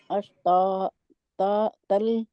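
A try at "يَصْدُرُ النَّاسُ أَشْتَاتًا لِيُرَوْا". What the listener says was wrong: نہیں، اشتا 3 تا جہاں پہ نہیں ہے، اشتاتلی، اشتاتلی. لی نہیں کریں گے، لام کے آگے آپ نے یا لگا دی، لی کر کے لمبا کھینچ کے اشتاتلی یورا.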